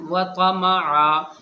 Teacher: ایک زبر ختم ہو جاتا ہے، بچتا ایک زبر ہے، وہ الف مدہ کے ساتھ یعنی کھنچ کر کے پڑھا جاتا ہے